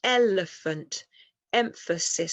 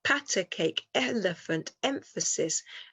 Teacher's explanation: let's look at some words here that have a rhythm they have a strong weak weak rhythm